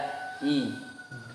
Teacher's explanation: Mana tempat keluarnya kasroh, yaitu seperti ya, tempat keluarnya kasroh seperti ya, yaitu tengah lidah dengan langit-langit di atasnya.